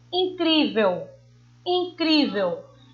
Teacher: O cri a gente pronuncia com mais intensidade, né? Mais força. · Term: paroxítonas